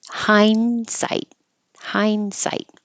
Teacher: This is a good example of you won't hear the D at all. The N and the D are made in the same place with your tongue tip behind your top teeth. So when I say hind, you don't know, am I going to the N or the D?